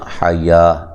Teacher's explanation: ہا کو واضح نکالنا ہے، یا مد اصلی ہے، ٹھیک ہے، اس کو حیو نہیں کرنا، حیا، ٹھیک ہے۔